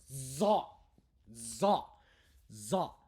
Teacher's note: this is Zane the z sound but it's stronger another emphatic sound